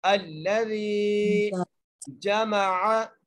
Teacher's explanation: الذی حمزہ اور پھر لام ہے، لام کے اوپر تشدید ہے اس لیے ہم حمزہ کو لام سے ملائیں گے اور ذال کو ایک الف کی مقدار کھینچ کے پڑھیں گے. جائے مدہ آ گئی ہے.